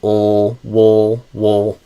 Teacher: Because I kind of think you were adding in an extra vowel here on the way to the dark L. Whereas I imagine it as I just go directly from the W to the dark L. So ul, wool.